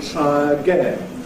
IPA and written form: ˈtraəˈgen (try again)